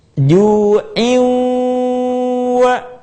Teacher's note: Suara kita sebagiannya masuk ke rongga hidung. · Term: gunnah